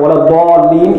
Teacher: it must be pronounced with the makhraj of the dad. and not the makhraj of the dal.